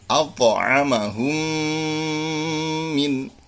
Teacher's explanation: Nah, itu di samping suara mim sukun ditekan, maka suara khoysum harus lebih nampak, yaitu suara dengung dari mim yang ditasydid yang keluar dari pangkal hidung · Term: idgham mimi